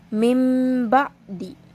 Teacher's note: nun berharokat sukun di sini yang bertemu dengan huruf ba. Sehingga dalam cara membacanya pun berubah menjadi mim dan disertai dengung. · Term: iqlab